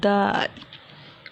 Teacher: دال میں زبان کا سرا سامنے کے اوپر والے 2 دانتوں کی جڑ سے جب لگاتے ہیں تو ادا ہوتا ہے دال